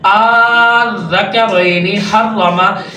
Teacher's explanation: لفظ کو سخت کریں گے، مضبوط کریں گے۔ یہ تشدید کے لیے ہوتا ہے کہ ہم اس کو 2 مرتبہ پڑھتے ہیں